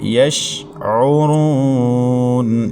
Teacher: وما یشعرون، وما، میم کے بعد الف مدہ ہے، ایک الف تک کھینچیں گے۔ یشعرون، یش شین ساکن ہے، درمیان کلام میں ہے تو یہاں قلقلے سے بچا کے پڑھنا ہے کیونکہ شین حروف قلقلہ میں نہیں ہے۔